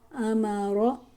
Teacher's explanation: یہاں رو کے اوپر زبر ہے تو رو کو موٹا کر کے پڑھیں گے